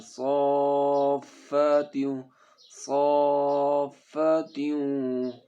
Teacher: آ رہا ہے نا اوپر، یہ مد کریں گے، ٹھیک ہے، ہم اس کو 4 سے 5 الف کے برابر اس کو ہم کھینچیں گے